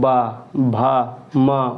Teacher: ये ओष्ठ होते हैं, ये मतलब ओंठों से बोलते हैं।